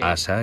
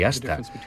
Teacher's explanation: La diferencia entre asa y hasta es una pequeñísima pausa justo cuando pronunciamos la T.